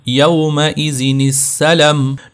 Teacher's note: نون زیر کو آپ نے فوراً ملا دینا ہے سین کے ساتھ